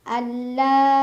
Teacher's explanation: karena ada nun sukun yang bertemu dengan huruf lam cara bacanya nun sukun diidgamkan atau dimasukkan ke lam tapi tanpa berdengung Jadi cukup ditekan Alla la Mad Thobi'i karena ada Alif sebelumnya fathah dibaca panjang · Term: idgham bila gunah